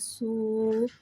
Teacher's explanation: واو ساکن سے پہلے پیش آ رہا ہے، واو مدہ ہو رہا ہے. واو مدہ کو ایک الف یعنی 2 حرکات کے برابر کھینچ کے پڑھیں گے اور پیش کو ہونٹوں کی گلائی کے ساتھ ادا کر کے پڑھیں گے · صاد حرف مستعلیہ ہے لہٰذا اس کی آواز حلق سے موٹی ادا ہوئے گی